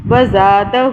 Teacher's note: الٹا پیش جو ہوتا ہے ایک الف کے برابر کھینچا جاتا ہے اس کو